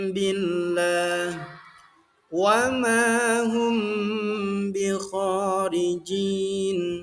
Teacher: Ikhfa syafawi itu artinya menyamarkan terjadi karena bertemunya huruf mim sukun dengan huruf ba.